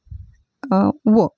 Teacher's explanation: आपले दात आणि ओठ या दोन्ही स्थानापासून उच्चार होणारे वर्णच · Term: दंतोष्ठ वर्ण